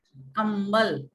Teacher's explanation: म भी हम लोग बोलते हैं तो नाक से आवाज निकलती है ना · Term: नासिक के ध्वनि